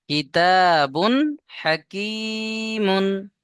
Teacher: একটাই, তাহলে আহ, তানবিনকে এখানে কি করে পড়তে হবে? এই তানবিন, বিনা গুন্নায় জাহির করে তাড়াতাড়ি পড়তে হবে। অর্থাৎ গুন্না করা যাবে না। যদি এইভাবে পড়েন যে কিতাবুন হাকিমুন, কিতাবুন জি হুজুর, বলে যদি গুন্না করেন, তাহলে কিন্তু ভুল পড়া হবে।